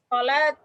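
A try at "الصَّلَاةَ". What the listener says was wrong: Kasih baris. As-sholat. Sholata.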